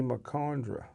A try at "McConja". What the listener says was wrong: Merconja. Yeah, no D in there. McConja. He didn't say it right.